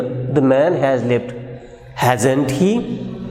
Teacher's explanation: change in pitch is at the question that is hasn't he, and it indicates that the objective of speaker here is to seek confirmation rather than seeking an agreement. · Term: rising tone